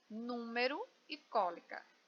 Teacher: Todas têm a antepenúltima sílaba mais forte e todas são acentuadas. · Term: proparoxítona